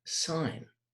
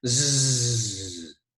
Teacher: So we say that the Z sound is a voiced consonant because we are using our vocal cords.